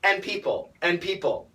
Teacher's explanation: almost always the N is going to cancel the D